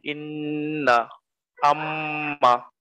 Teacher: নাকের বাঁশির ভিতর হইতে গুন্নার শব্দ উচ্চারিত হয়